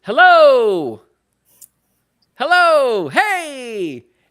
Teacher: And I know that it's a swoop. I don't know what the official term is, but I call it a swoop rising tone.